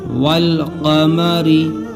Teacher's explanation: والقمری، دیکھیے یہاں الف نہیں پڑھا جا رہا ہے، لام پڑھا جا رہا ہے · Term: حروف قمری